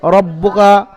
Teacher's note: রকে পুর করে পড়তে হবে, অর্থাৎ মুখ গোল করে পড়তে হবে রব্বুকা